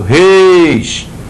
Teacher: Não, porque, embora sendo um ditongo é, mas a base do ditongo é fechada lá, timbre fechado, reis, então não tem acento.